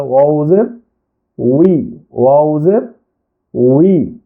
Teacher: অ হলো 15 নম্বর মাখরাজ, দুই ঠোঁট হইতে ওয়াও বা মিম উচ্চারিত হয়। তো অ ঠোঁট গোল করিয়া মুখ খোলা রাখিয়া উচ্চারণ হয়